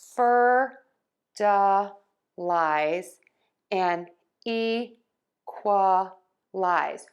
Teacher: we're going to use this short uh sound in the middle of the word, that schwa sound